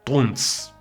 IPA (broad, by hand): tʼˤuns